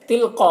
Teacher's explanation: تلقا، قاف حروف مستعلیہ میں سے ہے، اور یہاں پر جو مد ہے مد متصل ہے، اسے 3-4 الف کے برابر کھینچ کر پڑھتے ہیں۔